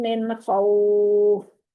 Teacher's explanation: यहाँ पर नाक में आवाज नहीं जानी चाहिए, नून की आवाज को वाजिया करना है, जाहिर करना है। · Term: इजहार